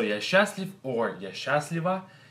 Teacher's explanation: So the way we say this word is we combine these two letters, these two sounds, into one sound, which is going to be sh, sh, and then we do not pronounce the letter t, so letter t is silent.